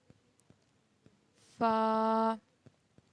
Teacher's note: اوپر کے اگلے دونوں دانتوں کی نوک جب نیچے کے ہونٹ کے اندر والے حصے سے لگے تو ادا ہوتا ہے فا